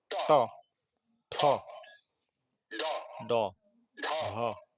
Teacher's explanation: জিভের ডগা অর্থাৎ একেবারে সামনের অংশটা উপরের দিকে লেগে যায়। · তালুর অগ্রভাগ না, মাঝখান। জিভের ডগা তালুর মধ্যভাগে অর্থাৎ মূর্ধাতে। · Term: মূর্ধন্য